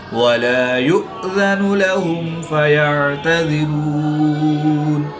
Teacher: حمزہ ساکن ہے تو اس کو جھٹکا دے کر پڑھیں گے